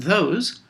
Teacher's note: those has two voiced fricatives the and the at the beginning